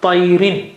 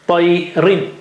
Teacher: Rin, that is double kasra, is nothing but ri with noon sakin sitting there behind, below the first kasra.